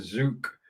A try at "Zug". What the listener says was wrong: Zug. It's more like a TS, yeah.